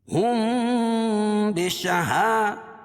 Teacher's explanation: میم ساکن کے بعد یہ با ہے تو یہ اخفاء شفوی ہوگا